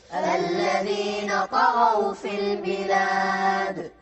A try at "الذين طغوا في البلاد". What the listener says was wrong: ما اسمع القلقلة. الذين طغوا في البلاد.